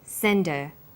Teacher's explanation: Send is the strong form and her is weak. Because her is not stressed, we drop the initial h sound. So it's pronounced sender.